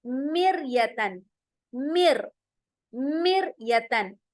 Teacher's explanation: हमारे जो होंठ हैं वो गोल नहीं होंगे, बिल्कुल फ्लैट हो जाएंगे। हमारी जुबान भी जो अंदर है, टंग, वो भी फ्लैट होगी। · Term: बारीक